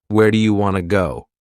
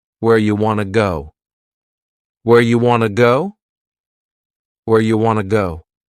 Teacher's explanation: You becomes ya and want to becomes wanna. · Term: reduction